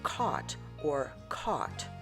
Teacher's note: It is defined by the low back merger in which the speakers do not distinguish the sound between the vowels of O and AU, such as in caught or caught, or the O and OU as in bought and bought, and the same sound as in pond and pond, the O and AW.